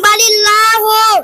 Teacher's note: আল্লাহর লামকে বারিক অর্থাৎ লা পড়তে হয়